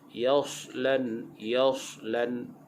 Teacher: huruf sad tu dibaca dengan tebal · Dalam ayat ini, pada sebutan huruf sad, yasla, huruf sad pastikan dia bunyi dengan sofir, berdesir.